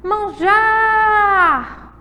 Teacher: O jar é a sílaba tônica mais forte